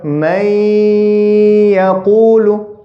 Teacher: This noon sakin over here is assimilated into the ya. So you read directly from this mim, poof, into the ya. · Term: idgham